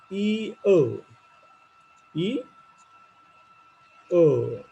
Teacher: now the movement is from e to o